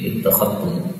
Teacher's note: zal ketemu tak, ini boleh idgham menjadi ittakhadtum